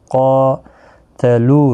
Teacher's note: قاف مستعلیہ ہے، قاتلو، لو واو مدہ ہے، 1 الف کی مقدار کے برابر کھینچ کر پڑھیں گے، قاف کو کھینچیں گے بھی 1 الف کی مقدار کے برابر کھڑی زبر کی وجہ سے، میم ساکن ہی رہے گا۔